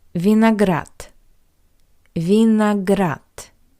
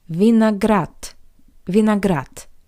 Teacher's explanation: the voiced consonant d at the end of this word also sounds like the paired voiceless consonant t